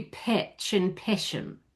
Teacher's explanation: If you get super posh, this short A, if you're playing like somebody really heightened RP, that short A can become more of a short E.